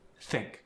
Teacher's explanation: the th sound stays clean. Your tongue is between the teeth.